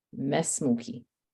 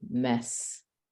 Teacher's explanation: So this is a rule in Arabic that whenever you have a letter with a long vowel and you have a letter after it, which has a sukoon, you eliminate the long vowel from your pronunciation. Okay? You just go straight to the sukoon and you say mess.